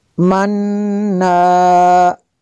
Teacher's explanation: نون مشدد ہے، یہاں پہ بھی غنہ کریں گے۔